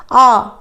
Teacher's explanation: जब आ हमने बोला स्वर तो क्या हुआ? पूरा मुंह हमारा खुल गया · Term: विव्रत स्वर